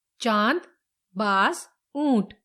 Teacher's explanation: अनुनासिक, मुख और नाक से बोले जाने वाले स्वर अनुनासिक स्वर होते हैं।